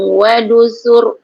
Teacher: Sur ni tebal. Ra dia tebal. Sebab ra itu sebelumnya baris depan.